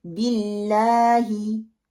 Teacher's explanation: जब जेर आएगी अल्लाह से पहले, लाम लफ्ज से पहले जेर आती है अल्लाह के नाम में, तो हम उसको बारीक पढ़ते हैं, उसको मोटा नहीं करते हैं, बिल्ला नहीं पढ़ेंगे, बी बा कसरा भी, बिल्लाही।